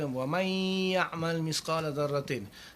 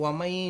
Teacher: Jadi disebut wa may, nun mati bertemu ya tu dia dengungkan dua harakat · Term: idgham ma'al gunnah